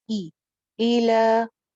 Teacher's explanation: जेर को मजहूल नहीं करेंगे, ए नहीं पढ़ना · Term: ई सिंगल हरकत